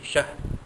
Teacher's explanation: tanpa dengung, ya, alf syahr, ha, di situ tidak ada apa-apa, cuma kita keraskan bunyi ha mati itu